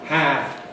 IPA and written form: hæv (have)